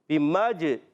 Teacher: बिमजनून में बा की ज़ेर को खींचना नहीं है। बिमज, जीम में होगा कलकला, आवाज़ लौट कर आएगी